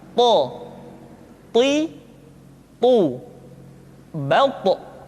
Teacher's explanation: To diucapkan dengan menyentuhkan ujung lidah dengan gusi-gusi dua gigi seri bagian atas. Sifat yang dimiliki oleh huruf to yang mesti nampak ketika kita ucapkan adalah sifat al-isti'la dan sifat al-itbaq. · ketika to diucapkan, suara kita terdengar menebal.